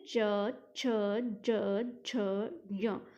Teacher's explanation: अब जब आप इसको बोलेंगे तो आप देखिए कि आपकी जो जीभ है वो टीथ के ऊपर, दांतों के जस्ट ऊपर जो जगह है उसको हम तालु बोलते हैं, वहाँ पर टच होती है। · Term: तालव्य